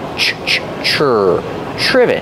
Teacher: it starts with tr so we make the CH sound like chicken together with the r